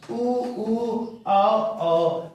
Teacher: उसको क्या बोलेंगे, वृत्तमुखी, यानी वृत्त के जैसा गोल हो जाना। वृत्त के जैसा जब गोल हो जाएगा होठ हमारा तो उसको बोलेंगे वृत्तमुखी स्वर